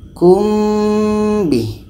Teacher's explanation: Ketika kita sebut huruf mim, kita sudah merasakan huruf ba. Kumbi. Dan mim ini adalah huruf bibir. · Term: ikhfa syafawi